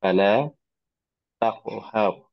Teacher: এখানে কফ, এই কলকলার হরফ, কলকলা করতে হবে